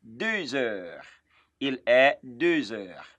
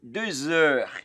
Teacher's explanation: And I also told us in this class that when you hear me say 2 heures, in between heure, okay, in between 2 and heure, there is Z sound there. And I told us that that sound is in French called la liaison.